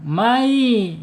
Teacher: May ya dilebur nunnya dilebur ke ya. May ya, dua guna e dua harakat ditahan dulu. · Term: idgham bigunah